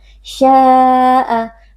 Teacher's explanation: Mad tabi'inya yaitu alif yang sebelumnya berharakat fathah pada sya, kemudian berjumpa dengan hamzah. Sya'a, dibaca panjang 4 atau 5 harakat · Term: mad wajib muttasil